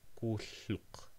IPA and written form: kuɬːʊq (thumb)